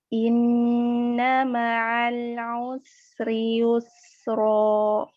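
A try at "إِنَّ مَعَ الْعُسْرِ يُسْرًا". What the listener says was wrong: Jangan matikan terakhir. Yusro. Jangan matikan. Yusro. Mengalir begitu saja. Jangan sampai ada hamzah ya.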